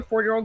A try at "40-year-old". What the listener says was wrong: 40-year-old. Just want to clarify that because you said it very quickly. It sounded like you said 4-year-old. So 40.